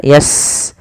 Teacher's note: Sin punya sifat namanya hamas, alirkan nafasnya